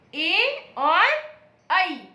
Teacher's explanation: ए और ऐ। ए और ऐ ऐसे वर्ण हैं जिनका उच्चारण कंठ और तालु से होता है। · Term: कंठ तालु